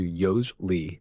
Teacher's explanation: Some people kind of skip the middle syllable entirely